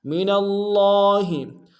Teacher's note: ذالک الفضل من اللہ، من اللہ میں نون کو لفظ اللہ کے لام کے سامنے آئیں گے، تشدید زور دیں گے، اگر لام کے اوپر کھڑا زبر ہے، ایک امتداد میں کھینچیں گے